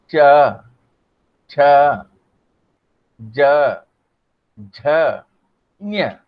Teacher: हमारी जीभ जो है जाती है क्या, तालु को स्पर्श करती है।